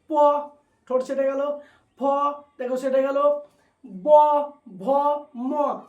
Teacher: তাহলে প এর বর্গ যদি উচ্চারণ করি তাহলে আমাদের ঠোঁটটা স্পর্শ করছে, তাহলে এটা হলো প বর্গ অর্থাৎ অষ্টবর্ণ বা ধ্বনি।